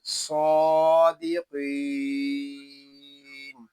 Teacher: स्वाद को हम एक अलिफ तक खींच कर पढ़ेंगे क्योंकि स्वाद के ऊपर खड़ा ज़बर आ गया है। स्वाद ये हरूफ मुस्तालिया में से है, इसको पूरी यानी मोटा भी पढ़ेंगे और इसमें सीटी की आवाज़ भी आएगी।